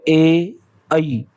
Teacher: आपके कंठे का भी और तालव्य का भी यूज हो रहा है। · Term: कंठ तालव्य